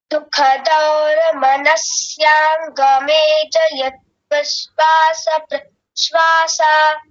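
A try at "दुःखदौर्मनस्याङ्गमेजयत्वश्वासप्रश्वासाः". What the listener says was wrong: बहुत ही सुंदर बहुत बढ़िया एकदम ठीक है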